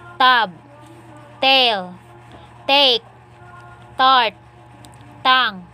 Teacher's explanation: The alveolar stops. Voiceless. Alveolar stop. Initial.